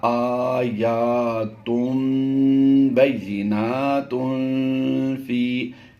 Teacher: ہم نے یہاں پر غنہ کیا ہے، ناک میں لے جا کر آواز دی ہے، تا دو پیش تن کی نون کی آواز کی بجائے ہم نے میم کی آواز دی ہے۔ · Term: اقلاب